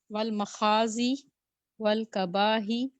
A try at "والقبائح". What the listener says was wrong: نہیں والکباہی نہیں، دیکھیں غور سے والقبائحی، ٹھیک ہے. حمزہ کو بھی ادا کریں ہا کو بھی ادا کریں.